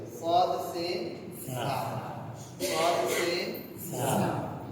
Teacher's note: জিহ্বার আগা নিচের দুই দাঁতের আগার দিকে লাগে।